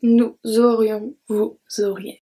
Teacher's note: So aurions, we don't pronounce the S. And then we have the link, nous aurions, vous auriez.